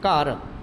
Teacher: ਤਾਂ ਇੱਥੇ ਜਿਹੜਾ ਸੁਰ ਆ ਉਹ ਸ਼ਬਦ ਪੱਧਰ ਤੇ ਸਾਰਥਕ ਆ ਇਸ ਲਈ ਘਰ ਨੀਵੀਂ ਸੁਰ ਦੇ ਵਿੱਚ ਹਮੇਸ਼ਾ ਅਸੀਂ ਘਰ ਨੂੰ ਘਗੇ ਨੂੰ ਕਕੇ ਵਿੱਚ ਤਬਦੀਲ ਕਰ ਲੈਦੇ